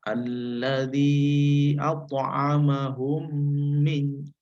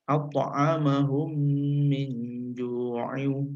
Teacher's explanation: Membacanya mendengung, kemudian dua bibir itu menempel lalu ditahan, ya, atas dasar dengungan tadi, yaitu sepanjang 2 harokat. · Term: idgham mimi